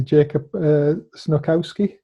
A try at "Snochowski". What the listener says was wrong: Almost. C is silent, so it's Snochowski. But yeah, you've been very close.